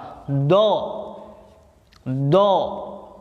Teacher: Ketika pengucapan huruf do, nafasnya ketahan, nafasnya tidak keluar.